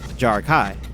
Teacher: the second half of jar Kai isn't pronounced with a vowel a but with the vowel sound of AI